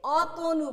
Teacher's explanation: মধ্যের যে অটা থাকবে সেটার উচ্চারণ আমরা ও এর মতো করব